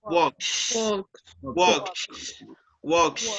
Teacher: use the voiceless sound for the letter S.